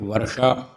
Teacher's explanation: वर्षा, वर्षा में जो श है वो मूर्धन्य है